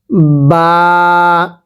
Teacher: এই বাটা দুই ঠোঁট থেকে উচ্চারণ হবে